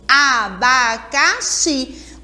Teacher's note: a sílaba tônica, xi, que é a sílaba mais forte da palavra abacaxi